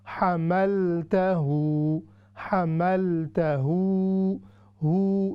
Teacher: یہ الٹی پیش ہے، یعنی ریورس دمہ ہے، ہم نے اس کو 3 سیکنڈ تک لمبا کرنا ہے